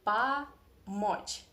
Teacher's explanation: the first one we pronounce as a because it is without stress in a weak position, and the second O is stressed, it is under the stress. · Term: Russian reduction